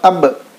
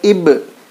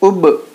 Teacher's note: बा निकलने की जगह जो है मखरज वो दोनों होठों के मिलने से अदा होता है बा। तो जैसे ही होठों को मिलाएंगे उसके बाद फ़ौरन अलग कर देंगे। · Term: क़लक़ला